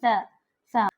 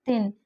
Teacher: زبان کی نوک سامنے کے دو دانتوں سے ادا ہوتا ہے، یہ سا، سا زبان دانتوں سے لگتی ہے تھن، تو اس طریقے سے سا کا مخرج ادا ہوتا ہے۔